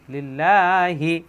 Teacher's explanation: এখানে কিন্তু মোটা হবে না, কারণ আল্লাহ শব্দের ডানে জের আসছে। লিল্লাহি, এই খাড়া যাবার জন্য একালি টান।